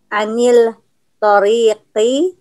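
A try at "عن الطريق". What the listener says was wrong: Anit tariqi, enggak dibaca lamnya, Mbak.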